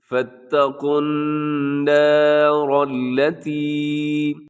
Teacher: نون زبر الف نا ان کو باریک رکھنا ہے، صرف حرف را کو موٹا کرنا ہے۔